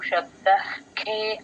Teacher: అఖ మహాప్రాణం పలకాలి గట్టిగా